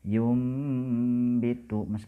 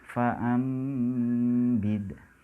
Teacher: mengganti huruf nun mati atau tanwin menjadi seperti suara huruf mim mati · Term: iqlab